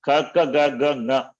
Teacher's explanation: That is throat. And here Nga is there, which is nasal. Therefore, throat plus nasal.